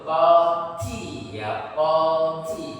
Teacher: lidahnya nempel di langit-langit, tak-nya itu hamzahnya muncul